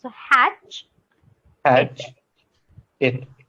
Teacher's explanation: Okay, so the T sound is not there. It's just the ch Hmm.